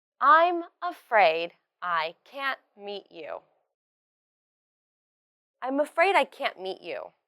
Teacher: in this whole sentence the T sound of can't is not explosive you can't hear it clearly